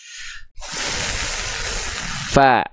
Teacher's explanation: Huruf fa juga punya sifat hams, tapi kadar nafasnya itu mengalir.